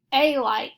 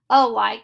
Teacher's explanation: We don't say a like, we say alike, so this A is marked with the schwa sound.